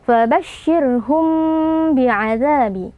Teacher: yang berjumpa dengan huruf ba hukumnya adalah Ikhfa Syafawi cara membacanya mim sukunnya kita baca dengan ghunah yang sedikit samar